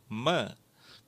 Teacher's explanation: Mim di bibir, dan ini ditahan nafasnya.